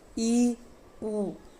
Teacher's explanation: संवृत स्वर है यानी कि जिनके उच्चारण में मुंह बिल्कुल बंद हो जाता है, संवृत यानी कि एक सर्कल बन जाता है, इनकी संख्या 2 है ई उ।